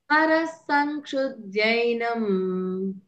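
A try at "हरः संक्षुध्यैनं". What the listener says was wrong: ఇక్కడ మీకు అర్థమై ఉంటుంది, హరహ అనకూడదు అక్కడ. హరః సంక్షుధ్యైనం అంతా కలిపి చదువుకోవాలి. సం సం జై జై యావత్తు కాదు, అది యావత్తు. జైనం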